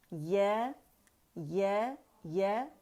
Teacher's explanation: یا وسط اللسان سے ہے اور زبان کا درمیانی حصہ